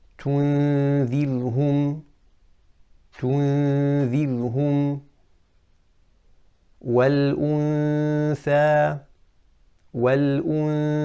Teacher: my tongue is close to the makhraj of the tha, but I'm not quite saying والأث, and I'm not saying والأن. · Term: ikhfa